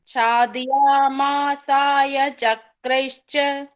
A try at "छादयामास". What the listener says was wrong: छादयामास, मासाय नहीं, छादयामास चक्रैश्च। छादयामासाय कहाँ है? छादयामास, छादयामास